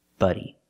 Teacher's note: buddy with a short uh sound like cup and up